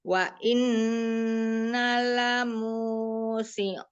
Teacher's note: Wa innanya itu nanya dua harakat ada alifnya.